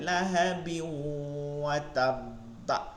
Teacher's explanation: তানবিন আছে, এরপর ওয়াও আছে, এজন্য এই ওয়াওকে মিলাই পড়তে হবে